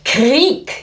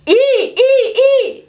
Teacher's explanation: Aber das I ist der prägnanteste Vokal, den wir haben. Ja? Sehr penetrant, ja, sehr spitz.